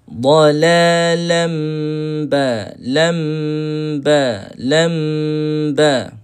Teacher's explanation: mim bertemu dengan ba ni kita just rapatkan bibir kita. Just rapatkan bibir kita. Kita kena tunggu dua dua saat ataupun dua harakat.